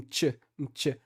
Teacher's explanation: uma consoante africada que tem esse som parece que tem um ch antes